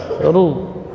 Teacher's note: Ru getarannya maksimal 2 getaran · Kalau ra dibaca tebal karena dhammah. Jadi huruf ra ketika fathah dan dhammah dibaca tebal. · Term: huruf takrir